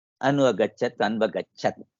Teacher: अनन्तरं अन्वगच्छत्, अन्वगच्छत् अनु अगच्छत्, अत्र एण् सन्धि, उकारस्थाने वकार आदेशः, एण् सन्धि, अनु अगच्छत् अन्वगच्छत्।